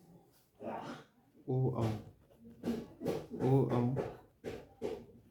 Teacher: औ का उच्चारण स्थान कंठ प्लस ओष्ठ कंठ प्लस ओष्ठ और नाम कंठोष् कंठोष् होता है।